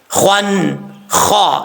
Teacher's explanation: یہ خا جو ہے منہ کے خالی حصے سے ادا ہوتا ہے اور اس کو پر پڑھیں گے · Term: حروف مستعلیہ